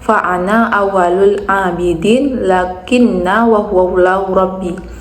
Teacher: Contohnya lafaz ana dan lakinna dibaca pendek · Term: qasar